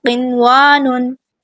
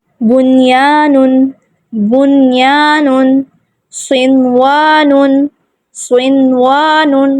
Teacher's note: ہم اس کو یہ نہیں کہیں گے کہ یہاں پہ ادغام ہے یا ہم یہاں پہ غنہ نہیں کریں گے، یہ کیا ہے؟ یہ اظہار مطلق ہو رہا ہے، ہم نون کو یہاں پہ ظاہر کر کے پڑھیں گے